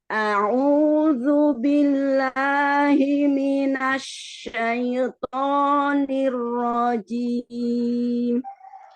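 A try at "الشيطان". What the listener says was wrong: Asyaito, huruf lin, harfu lin tidak masuk ke hidung. Asyaito. Tutup hidungnya. Syaito. Harusnya syaito.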